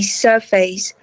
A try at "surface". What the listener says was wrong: Surface nào, đừng có surface. Cái từ face thì anh thấy đôi khi nó chỉ đọc là face khi nó là cái từ face đứng liền, đứng rời thôi. Còn đâu nó là face, surface.